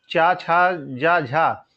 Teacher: चा छा जा झा, ये स्पर्श संघर्षी कहलाते हैं 4 व्यंजन